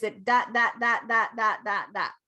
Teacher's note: every syllable is the same length and the same tone basically in english we are a stressed timed language so if you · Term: syllable timed intonation